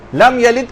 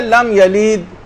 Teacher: لم یلد کے بجائے لم یلید. بہت سے لوگ بہت کھینچ کے پڑھنے کے عادی ہو جاتے ہیں، تو اس میں ہم نے زبردستی یا کا اضافہ کر دیا